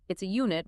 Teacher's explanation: It's a unit because unit starts with a Y sound.